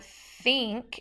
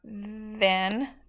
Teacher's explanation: if you do the word think doesn't have a vibration then does have a vibration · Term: voiced and unvoiced